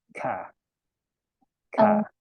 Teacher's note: di depan mulut bilang tidak ada udara keluar ya kalau kitaong harus ada hembusan udaranya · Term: sifat hams